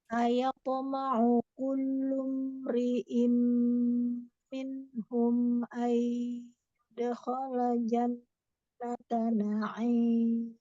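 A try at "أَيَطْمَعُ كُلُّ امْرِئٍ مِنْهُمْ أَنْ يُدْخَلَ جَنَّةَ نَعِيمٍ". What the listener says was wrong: Nah, di sini ada nun sukun bertemu ya. Sini agak sengaukan sedikit iya-nya ya. Di situ ada hukum apa nun sukun bertemu ya. Nun sukun bertemu ya. Idgham bi. Iya, pada saat idgham bi gunnah di situ durasinya harus lebih ditahan ya, lebih dilamakan. Kemudian agak disengaukan supaya dia masuk sedikit ke hidung ya.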